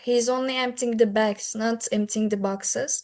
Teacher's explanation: I stressed bags here. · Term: contrastive stress